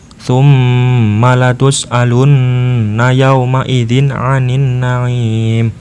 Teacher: Cara membacanya yaitu nun sukun atau tanwin yang demikian itu harus jelas dan pendek, yaitu satu harokat, tidak samar dan tidak mendengung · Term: idhar kholqi